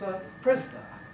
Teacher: Vowels can sometimes become semivowels when they're before a weak vowel.